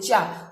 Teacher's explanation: कंठ से ऊपर जब आप आएंगे, मुंह के उसमें आएंगे, तो जो जीभ के साइड वाला है, जैसे आप चा बोलते हैं, चा, तो जीभ जो है वो आपकी जो है, आप उसको फील करके देखिएगा, दोनों जीभ के साइड वाले पार्ट जो हैं वो ऊपर टच होते हैं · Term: तालु